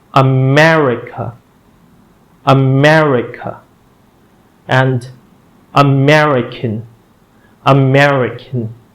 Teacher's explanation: The stress is on the second syllable, me.